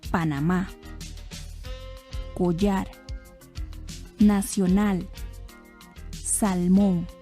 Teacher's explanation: observé que todas las palabras llevan el acento en la última sílaba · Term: agudas